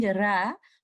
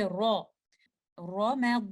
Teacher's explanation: a fatha so we will make this letter raw heavy and we will recite this letter row with thickness and with full mouth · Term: heaviness